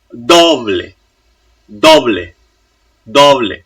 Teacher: So the ble part is soft and the do is strong. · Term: strong D